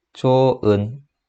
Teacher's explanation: 자, 현상을 보면 뭐가 탈락했어요? 예, 히읗 소리가 탈락했습니다. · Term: 히읗 탈락